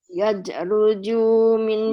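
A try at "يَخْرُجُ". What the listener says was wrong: Yakhruju. Itu huruf kha ya. Yakhruju.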